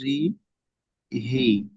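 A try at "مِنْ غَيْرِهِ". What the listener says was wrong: ঠিক আছে, মিন গায়রিহি, হি টান দিতে হবে।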